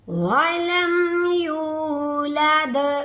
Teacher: یو واو مدہ ہے، واو سے پہلے پیش آ گئی ہے، اس کو ہم ایک الف کے برابر لمبا کر کے پڑھیں گے